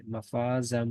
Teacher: اس کی وجہ یہ ہے کہ جی تنوین ہے اور تنوین کے بعد حروف یرملون میں سے میم آ رہا ہے، تو اس کا ہم ادغام کر لیں گے، اس کو ملا دیں گے اور ساتھ غنہ بھی کریں گے